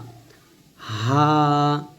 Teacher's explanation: এটা গলার শুরু থেকে নরমাল ভাবে বলব চাপ দিব হা তারপর হামজাহ হামজাহ হামজাহ ইয়া ইয়া এ দুইটা কিন্তু সেম একই হরফ একই কথা এটাও ইয়া এটাও ইয়া ইয়া ইয়া এরকম তো আশা করছি আপনারা প্রত্যেকটা বুঝতেই পারছেন।